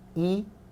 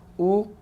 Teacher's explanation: 입술이 평평하냐, 동그라냐. 이거 가지고 구별하고요. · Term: 평순하고 원순